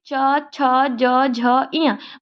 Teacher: तालव्य जो हमारे तलवे को टच करे,